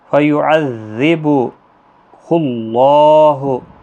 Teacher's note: یہاں پر اللہ کا لام موٹا پڑھا جائے گا اس پیش کی وجہ سے